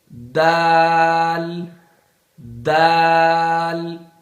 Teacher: دال، یہ زبان کی نوک سامنے کا جو ہوتا ہے نا زبان کا حصہ، اس کو زبان کی نوک کہتے ہیں. یہ سامنے والی زبان کی جو نوک ہے یہ اوپر والے دانتوں کی جڑ سے لگ جائے تو یہاں سے دال ادا ہوگا. دال، یہ جو اوپر والے دانت ہے نا یہ سامنے کے، ان کی جو اوپر جہاں سے دانت شروع ہو رہے ہیں وہاں سے دال جڑ میں لگا دے.